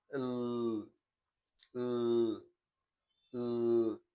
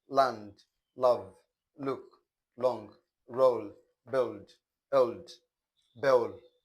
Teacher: This sound is described as voiced alveolar lateral.